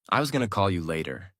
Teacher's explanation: Notice the changes. Going to becomes gonna. The whole sentence flows more smoothly.